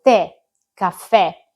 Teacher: indica che la e accentata va pronunciata aperta, quindi avremo la e di poiché con accento acuto e la e di te con accento grave.